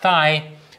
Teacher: where my tongue is really between my teeth and it can also produce that by putting my tongue against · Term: interdental, interdental fricative